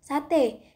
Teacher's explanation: lirik fonem e fonem e mempunyai dua macam realisasi yaitu pertama direalisasikan sebagai bunyi e Tengah atas depan tak bundar apabila berada pada silabel terbuka seperti pada kata sate yang kedua direalisasikan sebagai bunyi e Tengah